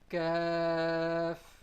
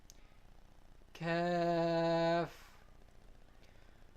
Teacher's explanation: It is pronounced from the hard palate.